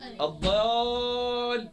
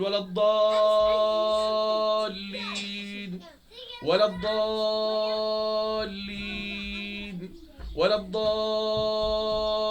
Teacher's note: الضال دي مد كلمي لازم مثقل 6 حركات